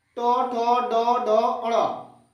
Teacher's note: जीभ मुड़कर तालु में सटता है